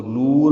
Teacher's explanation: نور میں نو واو مدہ ہے، دو حرکات یہ لمبے کرنی۔